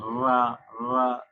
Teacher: जब जीभ के आगे का भाग ऊपर के मसूड़ों के किनारों को जल्दी जल्दी या कहें बार बार छूते हैं तो ये लुंठित ध्वनियां निकलती हैं